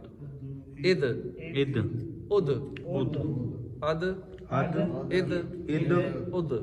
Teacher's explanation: دال ہے حروف قلقلہ، اس لیے یہاں پہ آواز لوٹے گی، اب جنبش ہوگی۔